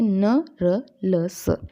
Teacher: जिन व्यंजनों के उच्चारण में जीवा ऊपरी मसूड़ों को स्पर्श करती है, तो वो वर्तस्य व्यंजन कहलाते हैं।